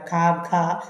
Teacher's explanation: പശ്ചാത്തഭാഗം എന്ന് പറഞ്ഞാൽ കണ്ടത്തിൽ നിന്നുള്ള ശബ്ദങ്ങളാണ് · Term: കണ്ടാക്ഷരങ്ങൾ